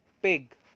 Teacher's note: we obstruct the air by the upper and the lower lip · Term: per sound